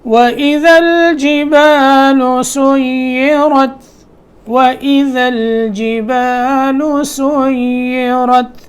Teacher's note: یا کو جو ہے نا اس کو مشدد کر کے اس پہ تھوڑی دیر لگانی ہے، لیکن یا کی ادائیگی میں نرمی ہونی چاہیے، یا کی ادائیگی میں سختی نہیں ہونی چاہیے۔